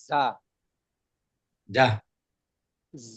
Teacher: যা হরফটা উচ্চারণের সময় একটা ভ্রমরের মতন একটা আওয়াজ হবে